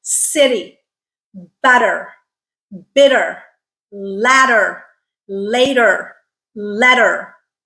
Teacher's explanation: the sounds that are alveolar tap so what you're doing is your tongue tip is tapping against that alveolar Ridge to make that sound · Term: flap